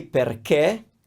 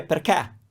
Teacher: We have open and closed vowels for E and O, and you will find that depending on which region you're from, as an Italian, you will have a preference over open vowels or closed vowels. And so I say perché, but if you go to Milan or even Sicily, you might hear perché with an open E.